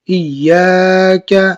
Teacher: الف مدہ کے الف کے مقدار کھینچ کے پڑھی